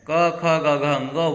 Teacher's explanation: आप देखिए कोई और आपका न ओष्ठ काम करेगी न जीभ काम करेगी, क ख ग घ का उच्चारण कहाँ से होगा? कंठ से होगा।